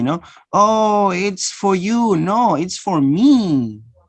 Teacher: You don't use the weak form. You use the full form because you want to emphasize.